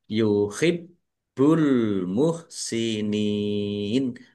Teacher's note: Bnya dibaca dobel, ada tasdidnya ditekan dan ditahan biar tampak dobelnya.